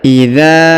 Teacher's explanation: huruf dza yang ini ya, dipanjangkan 2 harokat karena di depannya terdapat alif ya. Maka kita baca idza ya, ini ya, alif pengaruh ya, alif pengaruh mempengaruhi untuk menjadi 2 harokat ya.